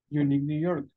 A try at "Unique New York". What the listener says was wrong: Unique New York. That's it. Very good.